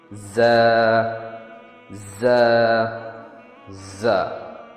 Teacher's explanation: اس میں ٹانگ ٹپ دانتوں کے پاس ٹچ ہوتا ہے. یہ ساؤنڈ وائس اور ایلولر فریکیٹو ہے. ز کا ساؤنڈ زیڈ جیسا ہوتا ہے جو ہلکی سی وائبریشن کے ساتھ پروڈیوس ہوتا ہے.